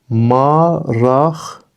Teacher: Maraqlı sözü maraqlı formasında tələffüz olunur. Yəni q samiti x kimi tələffüz olundu